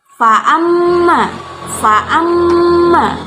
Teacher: ma-nya termasuk gunnah, dibaca dengung. Fa'amma man utiya, man utiya, man utiyanya ma-nya tidak dengung, termasuk hukum bacaan idhar, dibaca jelas.